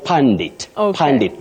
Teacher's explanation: that letter U in that word takes what we call the mid Central sound